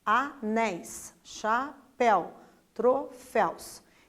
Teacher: é a sílaba mais forte né então é a última sílaba por isso a gente chama de oxítona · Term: oxítonas